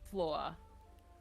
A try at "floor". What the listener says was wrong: See, you're adding... To me, it sounds like you're adding vowels. Like you've got an A in your floor somewhere.